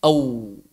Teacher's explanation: Au, dua-duanya aktif. Bibir bawah dengan bibir atas sekaligus. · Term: huruf waw